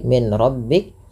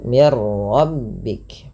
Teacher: Dan di sini juga idgham kamil, nunnya hilang secara utuh karena langsung ke huruf ra, dan ra dibaca dengan tebal. Hati-hati dalam melafalkan ra, tidak dibaca dengan mir rabbik, jangan banyak sekali takrir pada huruf ra, tapi sekali saja mir rabbik.